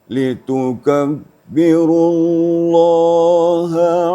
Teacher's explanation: Jangan sampai penekanan suara pada kalimat Allah.